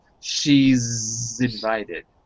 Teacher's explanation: I'm hearing a sh but I want to hear a Z.